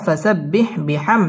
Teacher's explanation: মিম সাকিন ইজহারে খাস গুন্না ছাড়া পড়তে হবে।